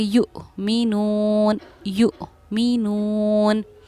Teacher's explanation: वहीं यहाँ हमज़ा पर जज़म सकून है तो इसको हम हमज़ा साकिना कहते हैं और हमज़ा साकिना के पढ़ने में हमेशा झटका होता है, इसीलिए हम इसको झटके से पढ़ेंगे युमिनून, युमिनून।